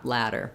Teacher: my tongue just goes up, does a light touch to that spot behind the teeth, and then releases. In some languages, the flap is an R.